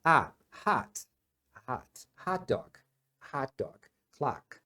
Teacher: Você não faz O, você faz A. Como se você falasse um O, só que abrindo a boca para falar um A. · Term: som curto do O